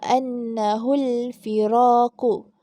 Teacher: ada huruf nun syaddah. Jadi kita baca dengan dengung. Kita baca dengan dengung, kadar bacaan 2 harakat.